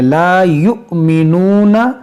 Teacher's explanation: یہاں پر حمزہ ساکنہ ہے, اس کو جھٹکا دے کر پڑھیں گے